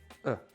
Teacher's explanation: C'est la voyelle que vous allez prononcer quand vous relâchez tous les muscles de la bouche et que vous, simplement, vous faites passer un petit peu d'air. Ça fait E. C'est une voyelle qui est présente dans pratiquement toutes les langues parce que c'est la plus simple, la plus basique. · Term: schwa